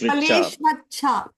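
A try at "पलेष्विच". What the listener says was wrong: Not yeah, Palesh Vicha, not Vacha. Where is Vacha comes? Rama Palesh Vicha.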